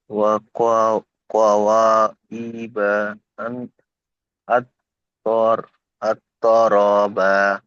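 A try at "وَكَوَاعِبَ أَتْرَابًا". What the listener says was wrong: ওয়াকা ওয়া, এখানে ওয়া আলিফ জবর ওয়া টান হবে। ওয়াকা ওয়া, ক নয়, এটা কা, কাফ জবর কা। ওয়াকা ওয়াইবা আতরাবা।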